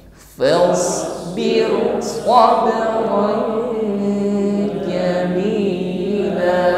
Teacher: Swabron jamila. La kita panjangkan cukup satu alif. Jamila tidak lebih.